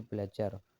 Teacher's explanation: Fonem R berubah menjadi fonem L. Pergeseran fonem. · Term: Perubahan fonem